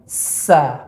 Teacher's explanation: Ketika sa atau ta, maka pangkal lidah tidak naik, Pak.